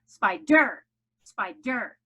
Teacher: the accent is on the first syllable. No accent on the second. And then there is nothing after that I in the first syllable.